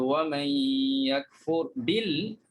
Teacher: kalau nun mati bertemu ya, dia ma'al gunnah. So dengung. Berdengung di situ.